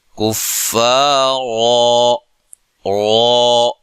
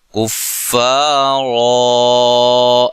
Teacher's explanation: الف مدہ کی جو مقدار ہوتی ہے وہ ایک الف ہوتی ہے، ایک الف سے اس کو زیادہ لمبا نہیں کریں گے، کفارا ایسے لمبا نہیں کریں گے، یہ غلط ہو جائے گا، ٹھیک ہے۔